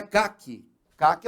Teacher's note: a sílaba mais forte é a última · a palavra oxítona ela tem a última sílaba tônica